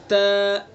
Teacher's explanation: والے حصے سے ادا کرنا ہے با کو، ٹھیک ہے۔ تا، تا کا مخرج زبان کی نوک ثنا علیہ کی جڑ